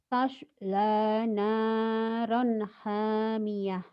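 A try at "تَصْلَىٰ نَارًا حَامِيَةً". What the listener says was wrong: Di shotnya kamu belum mantap ya, masih tosh. Bukan tas. Biasa aja. Baso, soto, sholat, tas. Jadi jangan tas, baso, soto ya.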